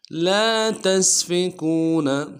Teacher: لام کے ساتھ الف مدہ ہے، ایک الف دال میں کھینچیں گے